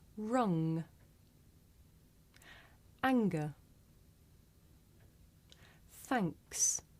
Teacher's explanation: we make this sound towards the back of the mouth